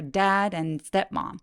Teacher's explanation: 문장이 끝나면 step m 하면서 톤을 쭉 내려 주세요